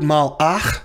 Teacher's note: the stressed syllable is the last one, ach. The previous syllable is mal, and the vowel in that mal is short.